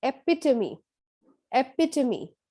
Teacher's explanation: Epitome, where the stress is on the second syllable.